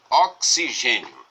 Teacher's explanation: Nós temos aqui essa letra X que representa um dífono, ou seja, a letra X aqui é pronunciada como se fosse um KS